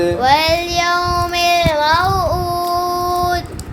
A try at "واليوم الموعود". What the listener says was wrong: दाल पर फिर कलकला नहीं किया.